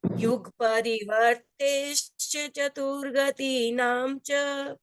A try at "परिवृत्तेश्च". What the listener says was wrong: वर्ते आ रहा है, वर्ते अलग शब्द है, वृत्ते अलग शब्द है। वर्ते में तो रे उस पे चला जाएगा, वृत्ते। लोकालोक विभक्ते युग परिवृत्तिश्चतुर्गतीनां च